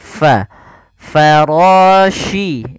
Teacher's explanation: alirkan nafas pada lafal fa, ini jangan diganti dengan pa. Nah, ini salah, tapi dia fa.